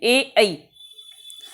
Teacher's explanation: तो यहाँ पे सूत्र लिखा, ए दई तो हो कंठ तालु, यानी कि ए आई को कंठ और तालु दोनों से बोलते हैं। ए आई बोल के देखिए, आवाज कंठ से भी आएगी और जीभ तालु को भी छुएगी, ए आई। · आवाज कंठ से भी आएगी और जीभ तालु को भी छुएगी, ए आई। यानी कि दोनों का रोल होगा, गले का भी होगा और तालु का भी होगा।